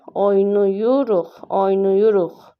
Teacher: Bütün samitlər cingiltidir deyir. Yanlışdır. Çünki q X-ya keçir. · Vurğu üçüncü hecanın üzərində. Bu da düzdür.